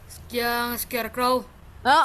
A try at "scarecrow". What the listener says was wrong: Betul itu bacanya.